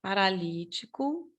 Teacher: a sílaba tônica está na antepenúltima sílaba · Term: proparoxítona